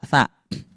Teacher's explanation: Huruf tsa itu cara pengucapannya ujung lidah bertemu dengan gigi seri atas.